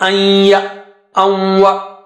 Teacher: Here the merger is with Gunna, the sound with nose and with double stretch.